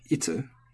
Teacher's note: And then itsu is a question word. So as I've talked about question words before, it is high-low.